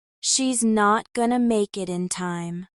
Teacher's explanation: Listen to how gonna replaces going to, and make it becomes one smooth sound.